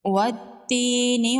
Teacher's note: والتین والزیتون، یہاں پر واو کو ڈائریکٹ تا کے ساتھ میں لائیں گے، الف اور لام کو نہیں پڑھیں گے، حروف شمسی ہے۔ یا مدہ ہے، ایک الف کے برابر کھینچ کے پڑھیں گے۔ یہاں پر بھی واو کو ڈائریکٹ زا کے ساتھ میں لائیں گے، الف اور لام کو نہیں پڑھیں گے، یہاں پر بھی حروف شمسی ہے۔ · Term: یا لین